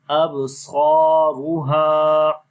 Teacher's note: با کے اوپر کلکلا ہوگا، کمزور کلکلا ہوگا. صاد کو لمبا کریں گے الف مدہ کی وجہ سے، ہا کو لمبا کریں گے الف مدہ کی وجہ سے.